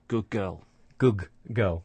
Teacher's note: The sound at the end of the first word is becoming like the sound at the beginning of the second word. So the d sound at the end of good is becoming like the g sound at the start of girl. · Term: assimilation